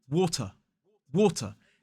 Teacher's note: as an isolated word we don't pronounce the r at the end · as an isolated word, we say water, water, ending in a schwa sound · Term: non-rhotic